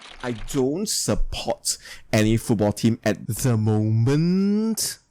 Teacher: describes how the voice Falls and then Rises